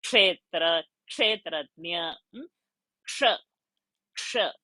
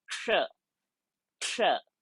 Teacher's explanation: It is not sh. It is not, it is sh, but with half k also added into it. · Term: ksha sound